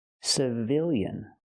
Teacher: now the stress changes the stress is on the second syllable so we use the short I sound